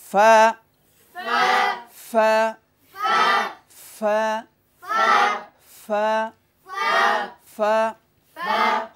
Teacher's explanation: নিচের ঠোঁটের পেট উপরের দাঁতের আগার সাথে লাগিয়ে